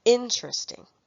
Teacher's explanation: Only vowels can be stressed, not consonants. In the word interesting, there are four syllables, but the first one is stressed.